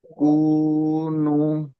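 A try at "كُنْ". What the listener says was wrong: কুনু নয়, কাফ নুন পেশ কুন। আমরা কাফ দু পেশ কুন পড়েছি, কাফ নুন পেশ কুন। কাফের উপরে পেশ আছে। সাকিন আছে। সাকিন আছে ডান দিকের হরফের সঙ্গে, ডান দিকের হরফের সঙ্গে মিলিয়ে।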